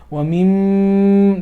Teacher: Mim also has the ghunna, meaning the sound is going to come from the nose. Wa mim, that's all coming from the nose.